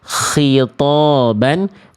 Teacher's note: kho ini dengan H, dengan H itu sama-sama punya sifat hams. Sifat mengalir nafas. Tapi kalau dia dilafalkan dari tempat yang berbeda, karakter nafasnya beda-beda semua.